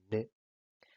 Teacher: Luego, los nasales son aquellos sonidos en los que el velo está bajo y por lo tanto el aire escapa no por la boca, sino por la nariz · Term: sonidos nasales